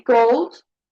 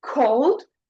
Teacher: Uh, minimal pairs with and without aspiration. So, when you say gold, no airflow, right? But when you say cold, you can feel that air.